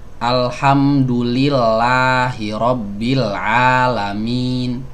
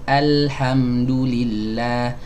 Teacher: a membuka, tapi membukanya pertengahan, ya, memang agak sedikit ditarik ke samping supaya dia nggak menjadi tebal o gitu, tapi nggak boleh berlebihan juga menariknya sampai seperti senyum gitu, ya, alhamdu, ya, nggak seperti itu. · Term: fathah mutawassithah